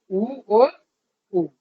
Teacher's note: होठ हमारे गोल हो जाते हैं, पास आ जाते हैं।